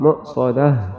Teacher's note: میم کو ہم حمزہ سے ملائیں گے، جھٹکا لگے گا